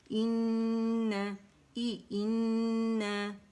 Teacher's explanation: اچھا اسے اس طرح نہیں پڑھیں گے، ان یا ان کر کے نہیں پڑھیں گے، بلکہ یہ ای ساؤنڈ دے گا، حمزہ اقص الحلق سے ادا ہوگا، ای ساؤنڈ ہوگا، اور نون مشدد، حرف غنہ مشدد ہے. اکمل گریڈ کا 2 کاؤنٹس کا غنہ ہوگا، 2 2.5 3 تک چلا جاتا ہے.